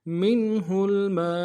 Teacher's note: اور اس کے بعد ما، میم کے ساتھ الف مدہ ہے، الف مدہ کے اوپر مد اصلی ہے، 3 الف دار میں کھینچیں گے